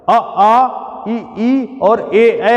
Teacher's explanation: फैले हुए हैं। इनके उच्चारण के दौरान होष्ठों की स्थिति फैली हुई रहती है। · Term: अवृत्ताकार